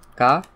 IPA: ɡ